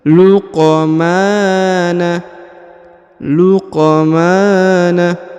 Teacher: huruf q berharakat sukun maka dipantulkan ya atau diqolqolahkan